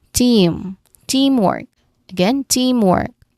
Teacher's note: So, pronunciation wise, stress is still in the first syllable.